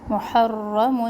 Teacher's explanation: محرم را تشدید کے ساتھ ہے تو اس کو ہم 2 دفعہ پڑھیں گے. محرم موٹا بھی پڑھنا ہے را کو